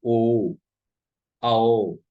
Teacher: ओ तथा औ का उच्चारण स्थान कंठोष्ठ होता है। कंठ और ओष्ठ।